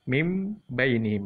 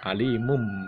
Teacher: Mim bainihim, min bainihim berubah menjadi mim bainihim. Jadi huruf nunnya sudah hilang ya sama sekali. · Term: huruf mim